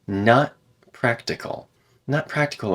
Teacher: there's a glottal stop before the P there